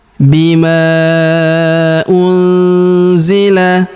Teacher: Unzila huruf nun sukun bertemu huruf z. Maka nun sukunnya melebur ke huruf zi. Kita baca dengung dan samar. Dengungnya kita tahan dua sampai harakat.